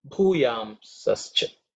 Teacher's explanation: bhu is fourth letter in the pa varga, so it has to be aspirated